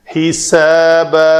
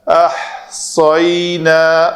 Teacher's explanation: حساب سین پتلا ہے، حساب احصینا صاد کو پر کریں گے، مخرج ایک ہی ہے، پر اور پتلا کرنے سے فرق نمایاں ہوگا کہ یہ کون سا حرف ہے۔